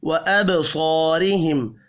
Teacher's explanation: وَأَبْصَارِهِمْ، با ساکن پر قلقلہ کریں گے. صاد حروف مستعلیہ ہے، پر پڑھا جائے گا. الف مدہ کو 1 الف کے برابر کھینچ کر پڑھنا ہے. · الف مدہ کو 1 الف کے برابر کھینچ کر پڑھنا ہے. را زیر کی وجہ سے باریک پڑھا جائے گا